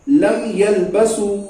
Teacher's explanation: इजहार शफवी में बिला गुन्ना के मीम को जाहिर करके पढ़ लेंगे। इसलिए इसका नाम भी इजहार शफवी है, जाहिर करना है मीम को।